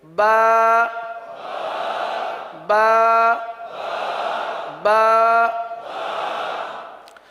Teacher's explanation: با یہ ہونٹوں سے ادا ہوتا ہے۔